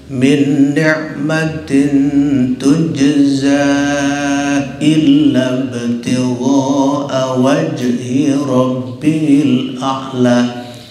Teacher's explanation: Kalau kita bacanya wasol, berlakulah mad jaiz munfasil. Artinya boleh 2, 3, 4 sampai 6 kita panjangkan.